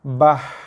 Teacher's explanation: Dengar bunyi angin, hembusan nafas yang keluar.